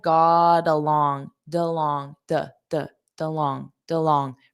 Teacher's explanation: So notice that got along. We have T between two vowel sounds. So I'm going to connect those together with a soft D